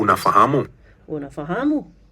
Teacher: for a question, you're going to raise your tone just slightly at the end